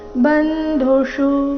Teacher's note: ಕೊನೆಗೆ ಮೂರ್ಧನ್ಯ ಷಟ್ಕೋ ಷ ಉಕಾರದೊಂದಿಗೆ ರಸ್ವ